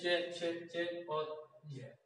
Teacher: वायु पहले किसी मुख अवयव से स्पर्श करती है और फिर कुछ घर्षण के साथ निकलती है, उन्हें स्पर्श संघर्षी कहते हैं।